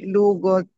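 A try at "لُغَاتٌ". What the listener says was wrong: Panjang. Loga, loga.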